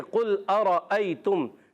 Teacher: چلے میں قاف کا مخرج بتا دوں. زبان کی جڑ اور تالو کے نرم حصے سے قاف ادا ہوتا ہے